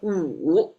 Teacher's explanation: the third tone, there's you have a fall, and then you kind of rise up a little bit